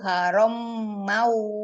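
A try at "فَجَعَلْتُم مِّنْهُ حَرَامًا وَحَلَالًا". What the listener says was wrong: Haromam. Haromau. Enggak, mimnya enggak terkit. Haromau. Masuk ke bau. Haroma. Haromau. Haromau. Jangan harom. Jangan harom. Bukan mim. Mimnya enggak ada tasjid. Harom. Haromau.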